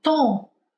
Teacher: em português, quando a gente diz palavras que terminam com M, o som sai um pouco pelo nariz, sai um pouco nasalizado